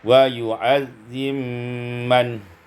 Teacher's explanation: idghamul ba fil mim, diidghamkan ba pada mim maka menjadi wa yu'azzim man.